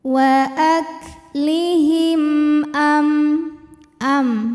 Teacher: mim sukun yang menghadapi huruf selain mim dan ba, yaitu huruf hamzah. Maka cara baca mim sukunnya adalah dibunyikan dengan jelas M-nya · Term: izhar syafawi